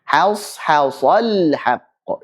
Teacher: Ha tipis dulu, shad tebalkan, ha tipis lagi, shad tebalkan, lam sukun tipis.